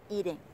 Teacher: Nhưng mà trong câu này á, thì các bạn để ý là cái từ eat nó được thêm một cái phần âm ng ở đằng sau, và các bạn đọc trọng âm sẽ được nhấn thôi nhá. Không phải cả hai cái phần âm này đều được nhấn, mà chỉ có một âm i được nhấn. Eating là kéo dài ra.